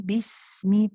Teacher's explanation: So remember, as you move from the ba to the sin, nice and gentle. The sin is rahawa. It's one of those letters that we prolong. So bismi, keep it running.